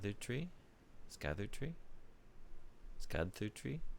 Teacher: you could maybe get away with like a soft D plus TH sound